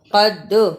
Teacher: قاف کو موٹا پڑھنا اور دال پر قلقلہ کرنا